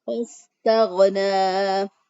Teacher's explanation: سین کے ادائیگی میں سیٹی کی آواز پیدا کی · نون کھڑی زبر نہ، ایک الف کے برابر اس کو بھی لمبا کرتے ہوئے وقف کریں گے. وَاسْتَغْنَىٰ یا جو ہے اس میں بھی وَاسْتَغْنَىٰ کے اینڈ پہ بھی یا سائلنٹ ہے، یہ پڑھنے میں نہیں آئے گی.